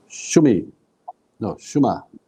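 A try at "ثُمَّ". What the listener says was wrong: Not sheen. Thumma. The meme has a shadda, so you give it its double. Thumma.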